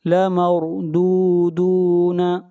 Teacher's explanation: را کو موٹا پڑھیں گے، را سے پہلے فتحہ ہے